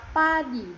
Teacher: Nah, untuk konsonan, P itu bunyi letup bilabial seperti pada kata padi, dihasilkan dengan menutup kedua bibir lalu melepasnya ke udara